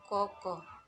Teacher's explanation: Tengah, belakang, bulat.